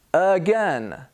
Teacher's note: The A becomes a schwa sound.